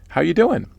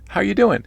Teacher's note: I'm raising my voice in the form of a question